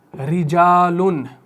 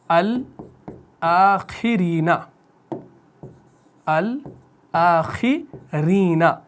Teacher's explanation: जब रॉ मकसूर हो, ज़ेर के साथ हो कहीं पर भी कुरान में, तो उस रॉ को आपने कैसे पढ़ना है? बारीक पढ़ना है, पतला पढ़ना है